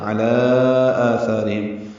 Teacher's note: عین وسط حلق سے ادا کریں گے، لام پر مد منفصل ہے، کھڑا زبر ہے، اور اس کے بعد دوسرے کلمے میں حمزہ آ رہا ہے۔